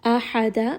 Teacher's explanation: Ha is going to be from the middle of the throat.